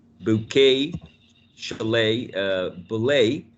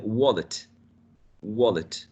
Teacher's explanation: In the first three, the word stress is in the second syllable, whereas in the last one, the green option is in the first one, wallet.